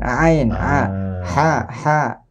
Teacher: huruf ain di mana keluarnya? Nah, di tengah tenggorokan. Ain, ha. Jadi kalau ain dia harus bergoyang jakun kita.